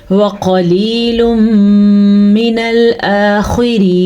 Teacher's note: یہاں پہ پھر ادغام بالغنہ کا قاعدہ ہو رہا ہے کیونکہ تنوین ہے اور تنوین کے بعد میم آیا ہوا ہے